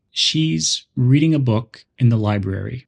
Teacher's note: the important words are she's reading book and Library the other words a and in the are softer and quicker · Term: function words